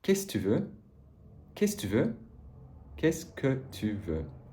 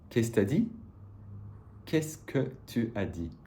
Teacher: And this que can even fall away completely in certain phonetic contexts